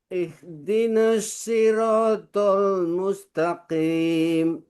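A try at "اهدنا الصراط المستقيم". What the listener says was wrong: Ya, jangan ditarik ke atas, sinnya tetap.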